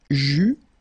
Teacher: final S not pronounced